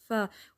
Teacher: نفسی، فا ساکن پہ ہمس ہے، جیسے پھونک مارتے ہیں نا ہوا میں کینڈل کو، تو اس طرح آواز آتی ہے۔ فا، اوپر کے 2 دان نیچے ہونٹ کے اندرونی گیلے حصے کو ٹچ کرتے ہیں